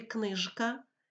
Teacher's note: у слові книжка після ж стоїть к глухий але ж не піддається впливу глухого звука і звучить дзвінко